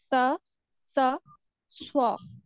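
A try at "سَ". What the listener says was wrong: सीन में नहीं फर्क हो रहा, सीन में सीटी नहीं आई आपकी। सा, इसका अंदर सीटी सीटी नहीं आ रही, इसकी अपनी कोशिश करनी। हर्फ को जो है आप ऐसे करें, साकिन कर ले, यानी हमजा पहले लगाकर साकिन करके पढ़े। अस, अस। सीटी वाजिया महसूस हो रही है? अस।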